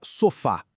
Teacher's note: a força tá no fá, a última sílaba, então é oxítona e termina com a.